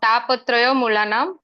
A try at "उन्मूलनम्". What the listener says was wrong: Unmulanam. Unmulanam. ना मूलनम नहीं है. उन्मूलनम. मूलन तो गलत हो जाएगा. तापोत्रय मूलनम का मतलब है कि 3 प्रकार के ताप अंदर आ जाएंगे अगर आप भागवतम पढ़ेंगे. तापोत्रय उन्मूलनम.